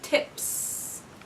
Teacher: tip ends with a voiceless sound so I'm going to say tips